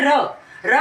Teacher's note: जब हम र को बोलते हैं तो हमारी जीभ लोढ़ने के आकार की, मतलब ऊपर की ओर मुड़ती है, इसीलिए इसको लुंठित बोला गया है।